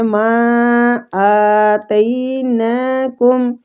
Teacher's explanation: ماں کی مد کو ہم نے کھینچنا ہے، مد جائز منفصل ہو رہی ہے 3 حرکات